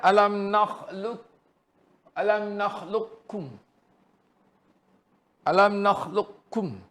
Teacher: Kum di situ kaf lah. Masuk kepada kaf secara idgham kamil.